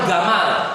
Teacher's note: Bahasa Amiyah Mesir ngomong jim dibaca gim. Saking syiddahnya dan saking jaharnya ya.